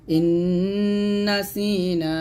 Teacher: ইন অবশ্যই এখানে হবে ওয়াজিব গুন্না